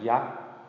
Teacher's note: yak, very short, quick, but also going high, but it's just a short sound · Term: short high tone